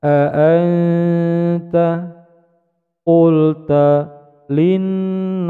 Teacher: bacaan ihfa nun sukun bertemu dengan huruf ta, mendengung samar panjang dua ketukan menuju pada huruf di depannya.